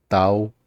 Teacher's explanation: it's way closer to a D sound than a T sound